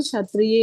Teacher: क भी है, आधा क और श मिलके है, तो उसको श, उन दोनों का उसमें उच्चारण सुनाई देना चाहिए, आधा क और श मिलके श। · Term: संयुक्त अक्षर